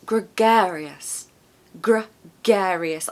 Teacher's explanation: I love all the g. So there's a schwa at the end, so us, and there's a schwa at the beginning.